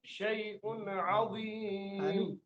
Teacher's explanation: زلزلۃ الساعۃ، ایسے شیء عظیم، شیء عظیم، شیء حمزہ اور آگے عین ہے، ان دونوں کا واضح فرق ہو جائے، معلوم ہو کہ عین اور حمزہ الگ الگ پڑھے جا رہے ہیں